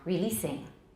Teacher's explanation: So it's an S. Don't make it a Z, whatever you do. And it's not long.